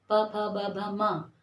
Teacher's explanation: अब हमारे होंठ है, हमारे प वर्ग का उच्चारण स्थान है ओंठ